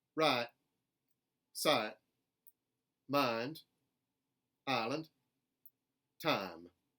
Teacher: most contemporary southern speakers will still use the intermediate a as a replacement for the i diphthong